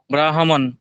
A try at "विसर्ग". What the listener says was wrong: आगे विसर्ग भी लगा है महोदय, उसको भी ध्यान दे, अभी हमने उसको बताया है। ब्राह्मणः, ब्राह्मणः।